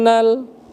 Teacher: Nun bertasdid, wajibal gunnah atau gunnah musyaddadah. Jadi kita tekan selama 2 harokat. 2 harokat itu setara dengan 1 alif, ya.